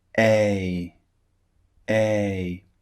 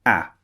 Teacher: to notice with these two sounds is the difference in length a is the first sound it's quite long a a and the second sound a is very very short it comes out in a very short burst